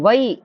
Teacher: ஐகாரம் பார்த்தீங்கன்னா சொல்லில் முதலில் வரும்போது 1.5 மாத்திரை அளவில் ஒலிக்கும். அதாவது ஐகாரம் பார்த்தீங்கன்னா தனியா ஒலிக்கும் போது 2 மாத்திரை அளவிலும், இப்போ வை அப்படின்னு சொல்லும்போது வையின்னா 1.5 மாத்திரை அளவுல, தனியா வந்தா 2 மாத்திரை அளவில். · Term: ஐகார குறுக்கம்